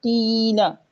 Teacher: قی کو ہم ایک الف کے برابر لمبا کریں گے اور لام کو لمبا نہیں کرنا آپ نے